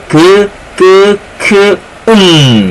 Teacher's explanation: 즈, 쯔, 츠로 또 설명할 수 있고요. 그 다음 여린 입천장과 혀뒤, 그래서 여린 입천장 소리